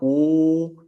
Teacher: estamos redondeando los labios para la u estamos trayendo la lengua hacia dentro de la boca